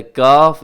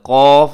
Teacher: ایک ہوتا ہے کاف، ایک ہوتا ہے قاف، جس کے اوپر دو نقطے ہوتے ہیں جو ہمیشہ موٹا پڑھا جاتا ہے، اور یہ جو کاف ہے یہ ہمیشہ باریک پڑھا جاتا ہے۔